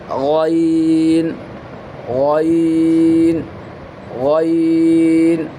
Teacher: اس کو ہم تھک اور بولڈ کر کے موٹی آواز سے پڑھیں گے.